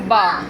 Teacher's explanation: बा दोनों होंठों के तर हिस्से से अदा होता है। बा दोनों होंठों के तर हिस्से से अदा होता है।